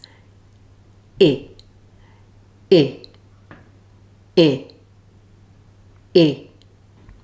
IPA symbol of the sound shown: ɪ